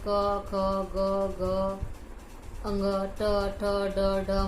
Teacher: इनके उच्चारण में एक अवयव दूसरे उच्चारण अवयव को छूता है तथा निकलने वाली वायु को कुछ देर रोक देता है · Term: स्पर्श